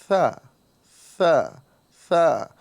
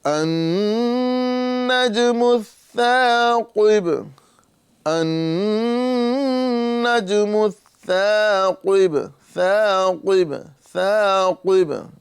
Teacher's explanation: ثا کے اندر ہمیں سیٹی کی آواز نہیں نکالنا ہے، سین کی طرح سیٹی یہاں پر نہیں ادا ہوگی، بلکہ صرف ہمیں ہلکی سی ہوا نکالیں گے اور زبان کا یہ سرا اور اوپر کے دانتوں کے کنارے سے اس کا مخرج ہے، اور ہم یہیں سے اس کی آواز نکالیں گے ثا ثا ثا۔